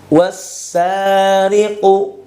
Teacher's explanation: langsung masuk ke huruf Sin yang bertasydid · Wassariqu, ya, tidak dibaca wal atau wa alasa. Jadi lam dan alifnya itu tidak dianggap. Waw langsung masuk ke huruf yang bertanda tasydid. Semoga teman-teman bisa difahami, ya, dengan apa yang saya jelaskan. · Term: idgam Syamsi, idgham syamsi